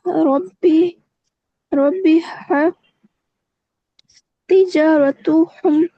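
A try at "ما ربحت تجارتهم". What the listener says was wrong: माँ रबिहत, रबिहत नहीं है, बा पे जो है वो शद नहीं है। माँ रबिहत, माँ रबिहत तिजारतु हम, माँ रबिहत तिजारतु हम।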